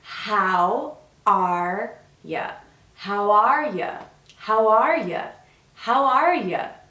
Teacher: How are you becomes how are ya, because we stress the verb. We stress the question word and we stress the verb.